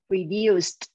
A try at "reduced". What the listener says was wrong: Đúng. Chuẩn ha.